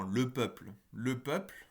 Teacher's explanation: À chaque fois qu'il se trouve en fin de mot et à côté d'une consonne sourde, eh bien le LE est sourd. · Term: l'équivalent sourd du LE